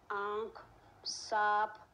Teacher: ध्वनि का उच्चारण जो है वह नाक तथा मुंह के साथ किया जाता है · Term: चंद्र बिंदु